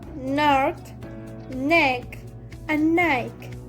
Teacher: The front and sides of tongue touch tooth ridge and the air goes through nose. · The place of articulation is alveolar.